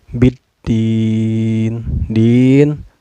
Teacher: bertemu dengan huruf Syamsiah yaitu dalya cara bacanya alif lam nya tidak dibaca melainkan langsung memasukkan ke huruf dal dan ditekan sedikitnya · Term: alif lam syamsiah